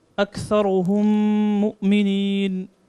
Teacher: إدغام شفوي. After mim sakin there's a mim mushadda, so you have to do ghunna.